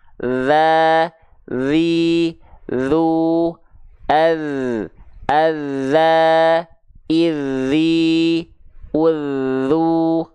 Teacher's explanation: kalau huruf dalal dia dilafalkan hanya mengalir suara tapi dia jahar tanpa mengalir nafas Jadi huruf dalal ini yang mengalir cuman suara zza tanpa mengalirnya · mereka sama-sama dilafalkan dari ujung lidah disentuhkan dengan ujung gigi Sari atas